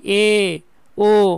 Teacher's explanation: অর্ধ সংবৃত্ত স্বরধ্বনি এ, ও, মোটামুটি ফাঁকা হয়ে গেছে।